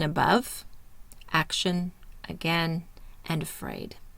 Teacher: It makes a short, barely pronounced sound. Mouth is half open and relaxed. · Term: the schwa sound